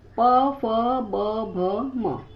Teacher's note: ध्वनि की उत्पत्ति ओष्ठ से होती है, उससे ओष्ठ वर्ण कहते हैं। स्थान क्या है? दोनों होठों का मिलन।